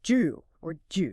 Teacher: the dat sound and the y sound often link up and create almost a J sound